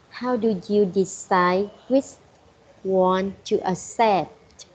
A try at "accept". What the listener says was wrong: Right, good tone of voice going down when you said accept.